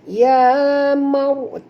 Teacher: Maryamu. Okay, huruf ra apabila dia mati, huruf sebelumnya baris atas kena baca tebal. Jangan baca Maryam, bukan bunyi dia Maryam, tapi bunyi dia ya mar, tebal.